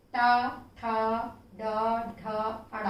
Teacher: हमारे फेफड़ों से निकलने वाली हवा जब जिह्वा के ऊपरी छत के अग्र भाग छूते हुए बाहर निकलती है उसे हम मूर्धन्य कहते हैं